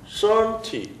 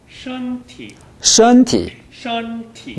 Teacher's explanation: 일성을 아주 높게 잡아보십시오